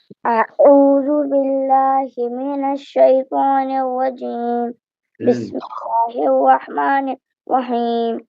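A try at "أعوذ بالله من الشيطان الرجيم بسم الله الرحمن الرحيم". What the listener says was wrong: بہت تھوڑا سا جلدی پڑھ لیا، اس کو ذرا تھوڑا سا رک کے سلو کر کے پڑھو۔ بسم اللہ الرحمن الرحیم،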